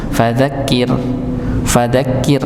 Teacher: Ra sukun sebelumnya kasrah i maka tipis